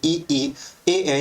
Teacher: जिन स्वरों का उच्चारण जीभ के अगले भाग से होता है उसे हम लोग बोलते हैं अग्र स्वर